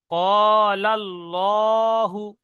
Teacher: আল্লাহ শব্দের আগে জবর এসছে, তাই আল্লাহ শব্দের লামকে ল অর্থাৎ পুর পড়তে হবে